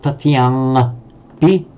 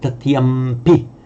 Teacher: It's not tatiyangpi, but tatiyampi, because the sound, the nasal before a labial here, the p, wants to join it and become a labial as well. So we say tatiyampi.